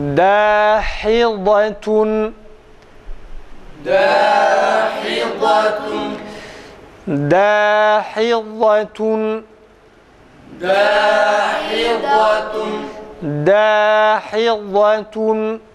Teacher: Rehvet sıfatı var. Rehvet sıfatından dolayı dad harfini telaffuz ederken sesi akıtıyoruz hafif bir şekilde. Aynı zamanda istitale sıfatıyla birlikte hafif za'ya yakın bir ses çıkıyor.